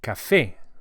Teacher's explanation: we emphasize the e vowel as it has an accent on it, which indicates the stress